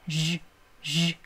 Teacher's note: 목청을 떨리게 쉬, 쉬 예, 이대로 합니다. 쉬 하던 소리에다가 진동을 넣어서 쉬, 쉬 하는 소리예요. 약간 쉬도 아니고 쉬 이렇게 쉬, 쉬 하는 터트려지는 소리도 아닙니다.